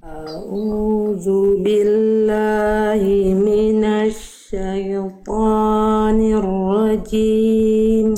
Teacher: tapi a tipis Hamzah tipis maka jangan sampai o tapi a